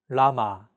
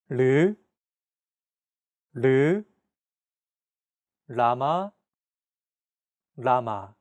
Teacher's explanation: When pronouncing this sound, your tongue should strike the gum ridge behind your upper teeth in a quick, rapid motion. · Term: 리을